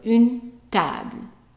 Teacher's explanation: notice that the stress is on the ta.